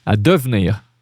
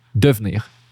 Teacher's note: You see how devenir become two syllable when we speak fast. Devenir. We skip that E.